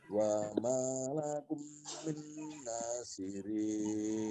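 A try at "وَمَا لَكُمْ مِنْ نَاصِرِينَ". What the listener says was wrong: Kumnya panjang. Kum min dua-duanya panjang. Wa malakum min nasirin.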